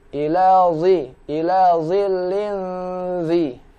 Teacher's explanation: huruf zo yang berharakat kasrah, diucapkan dari rahang tebal baru masuk ke kasrah.